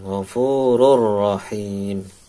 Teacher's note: tanwin ketemu roh idgham bila gunnah, masuk ke rohnya tanpa dengung